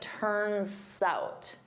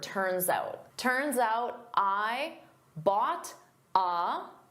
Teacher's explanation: I can combine those together and it sounds like turns out. So, I'm using that s to glide to the next word, but I say it as one word.